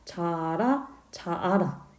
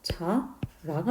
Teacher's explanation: 발음을 해보면 자아라, 자아라 자꾸 힘을 주게 되잖아요. 그래서 똑같은 모음이 올 때, 즉 동모음이 올 때 둘 중에 하나는 탈락합니다. 그래서 아라는 모음이 탈락해서 자라가 되는 거죠. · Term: 동모음 탈락